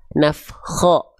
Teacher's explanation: ketika berharokat baris atas dia tidak dibaca dengan vokal A, tapi terdengar seperti vokal O